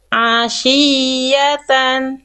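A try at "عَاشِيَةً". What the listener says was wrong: Ya-nya dikasih naber biar kerasa. Oh, huruf ya-nya bertasydid.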